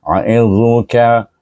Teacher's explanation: meninggikan pangkal lidah ataupun mengangkat pangkal lidah supaya dia tinggi dan kembang sana dan bacaannya tebal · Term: huruf istila